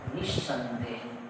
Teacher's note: विसर्ग के बाद क्या है, दंत स है, तो विसर्ग के स्थान पर कौन है, दंत स ही आएगा, लेकिन आधा आएगा।